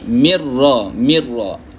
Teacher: Bila jumpa dengan ra kita tak bunyikan Nun kita masukkan terus Idam masukkan terus pada huruf ra bila gunah dengan tidak ada